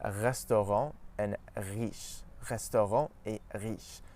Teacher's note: in French we pronounce it at the back of our mouth close to the uvula. So when we push our tongue back a bit, it forces our tongue to pronounce the R sound further back in the mouth. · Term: French R sound